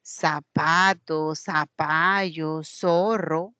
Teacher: en lugar de decir la Z, la pronunciación de la interdental, lo hacemos con una S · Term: ceseo